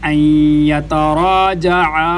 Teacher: جو مد ہے اس کو 3 الف کی مقدار لمبا کیا جائے گا